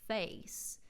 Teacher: The a [eɪ] sound in “face” that I make toward the front of my mouth drops down and moves farther back to sound more like fuh-eece in Georgia. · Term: southern drawl